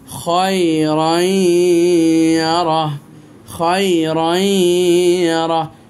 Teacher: फिर देखो तनवीन के बाद या आ गया, तनवीन के बाद अगर या आ जाता है तो तनवीन को या के अंदर दाखिल कर देना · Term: इदगाम